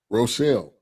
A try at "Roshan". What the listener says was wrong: It ain't no L's. It's Roshan.